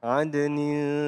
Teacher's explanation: Nah, di sini lafal adnin, adnya dibaca qolqolah, qolqolah.